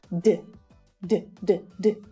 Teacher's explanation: verb in its infinitive form ends in a voiced consonant sound we pronounce the Ed at the end of the word as D not ID but D D D D there's no vowel sound there right